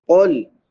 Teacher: قاف جو ہے یہ پر پڑھیں گے اور لام کو بغیر قلقلے کے ادا کریں گے۔